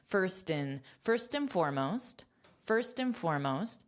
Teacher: this and is being pronounced as a quick n